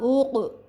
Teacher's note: کاف کے اوپر جزم ہے اس وجہ سے ہم اس پر کلکلا کریں گے